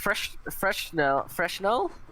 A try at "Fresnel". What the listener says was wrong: There's no H, so Fresnel, I think.